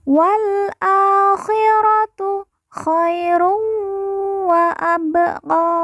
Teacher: Ba sukun kita baca pantul karena merupakan huruf qalqalah.